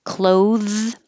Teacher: this is the verb clothes has the voiced th